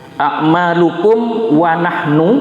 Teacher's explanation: ini a'malukum mim itu harus bacaannya jelas, artinya bibir tertutup ya. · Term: idhar syafawi